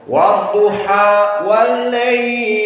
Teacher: Jika kita sukunkan ataupun waqafkan dari lail, maka kita membaca misalnya wadduha wal lail, diwakafkan di lail, maka lail di sini madlin arid lisukun, bisa dibaca 2 harokat atau 4 mutawassit atau 6 mutawwil